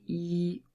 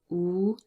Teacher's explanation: E is produced at the front, but oo is really produced more at the back of our throat